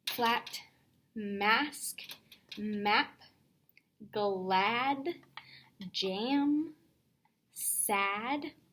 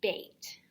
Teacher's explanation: No, it's not the ah sound. So we want to make sure that we have the ah as in bat, not a as in bait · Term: short A